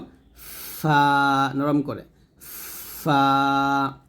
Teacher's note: উপরে দুই দাঁত নিচে ঠোঁটের পেটের সঙ্গে লাগিয়ে আমরা ফা টা বাতাস বের করে উচ্চারণ করব